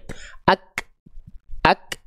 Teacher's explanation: Jadi nggak bareng, tertahan dulu suara, baru keluar percikan-percikan nafas dari huruf kafnya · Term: sifat hamsnya